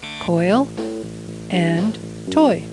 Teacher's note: its sound is made by sliding from one vowel sound to another